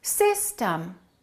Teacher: the first syllable is stressed the second syllable is reduced